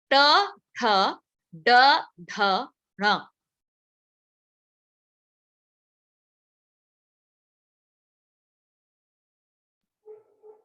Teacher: हमें अपने टंग को कर्ल करना पड़ेगा, हमें कर्ल करके ट ठ ड ढ ण करना पड़ा। और इसी चीज को बोलते हैं रेट्रोफ्लेक्स। · जो टिप ऑफ द टंग है उसको वो पीछे लगाना पड़ रहा है थोड़ा।